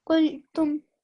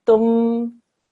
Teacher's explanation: You say the meme sakin and you end the sound. Don't do tum or drag it out at all, okay?